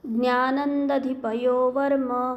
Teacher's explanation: अनुस्वारानंतर द आल्यावर अनुस्वाराचा उच्चार न करायचा